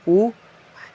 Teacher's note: तो वृत्तमुखी होते हैं कि जिसको बोलने पे आपका ओठ जो है वह गोलाकार बनता है